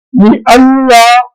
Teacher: فَوَلُّوا وُجُوهَكُمْ شَطْرَهُ لِأَلَّا یہاں نون ساکن کی آواز موجود ہے، لام آنے کی وجہ سے نون ساکن کی آواز ادغام میں چلی گئی